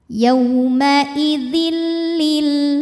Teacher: Selanjutnya ada hukum idgham bila gunnah karena ada tanwin kasrah menghadapi huruf lam. Cara bacanya tanwin dimasukkan ke lam tidak disertai dengung, jadi cukup ditekan.